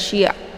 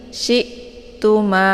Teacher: Cara bacanya syi-nya ditekan sedikit saja ya, dan bacaannya adalah tipis, jangan syi' ya, tapi syi'tuma bukan syi' ya. Jangan sampai hamzah ini dibaca terpantul ya. Kemudian tu dibaca pendek, ma dibaca panjang. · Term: hamzah sukun